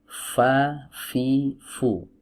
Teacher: Nah, kemudian didorong dengan angin yang kuat. Karena huruf fa memiliki sifat hams dan juga punya sifat rakhawah.